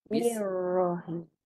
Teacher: Ra mati tu tebal. Melencong. Hujung belakang lidah.